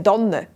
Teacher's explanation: In der Region rund um Basel sagt man nämlich eine Danne mit einem weichen D. Überall sonst sagt man es mit T.